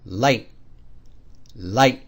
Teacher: similar to that creaky tone because it too ends very abruptly it's described as a very short high tone ending very abruptly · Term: stop tone